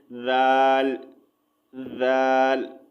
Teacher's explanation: ज़ाल की आवाज़ जो है बारीक और नरम होती है